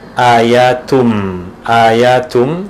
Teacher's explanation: Tapi di sini kita jumpai tanwin bertemu dengan mim, tanwin bertemu dengan mim, tanwin pada huruf ta, tun bertemu dengan huruf mim yang berbaris mu, muhkamat. Maka tanwin tadi dimasukkan kepada huruf mim, ianya terus dibaca ayatum, ayatum dimasukkan idgham. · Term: idgham bi gunnah